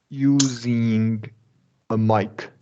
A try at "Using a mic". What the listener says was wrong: Yeah, and now release the G.